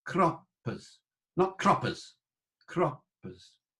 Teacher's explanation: Croppes, double P, and the consonant is lengthened a bit